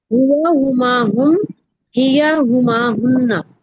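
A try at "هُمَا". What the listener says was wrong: हु, फिर आप हु पे वापस आ गए हो। हुआ, तेजी से निकलना है, हुआ। जी, हुआ, ऐसे नहीं बोलना आपने, ठीक है। फिर वो अलिफ आ जाएगी बीच में। इसको हराम गलती कहते हैं। अलिफ ऐड कर देना या सब्ट्रैक्ट कर देना, ये हराम गलतियों में है क्योंकि इससे मीनिंग्स बदलते हैं।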